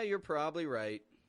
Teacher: the stress in this phrase is is more on right Less on probably more on right